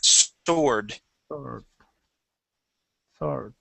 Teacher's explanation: the word sword okay that W is not going to be pronounced uh we don't say sword it is sword try that sword